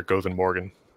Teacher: when we're just saying good morning, I just have schwas there